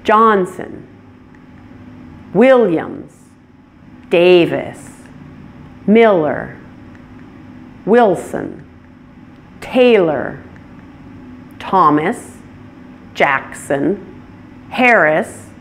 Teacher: They all stress the first syllable.